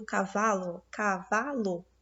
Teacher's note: a sílaba tônica é a penúltima como no caso do cavalo · O vá é a sílaba mais forte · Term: paroxítona